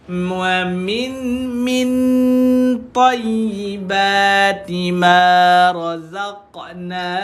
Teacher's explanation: Min tekan dekat belakang gigi, dia disebut dengan ikhfa hakiki.